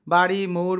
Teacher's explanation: যে ধ্বনি উচ্চারণের সময় জীভের সামনের অংশ দন্তমূলের একটু উপরে অর্থাৎ মূর্ধায় টোকা দেওয়ার মত করে একবার ছুঁয়ে যায় তাকে তারিত ব্যঞ্জন বলে